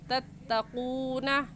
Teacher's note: वाव साकिन से पहले पेश आ गया तो वाव मद्दा होगा, और वाव मद्दा को एक अलिफ के बराबर खींचेंगे, ऐसे कहेंगे तत्तक़ून।